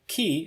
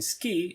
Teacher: The K in ki is aspirated, but the K in ski is unaspirated.